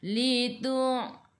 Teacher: Ra baris bawah kena baca dengan nipis kita senyum. Ridu dadidu tepi lidah menyentuh gigi geraham atas.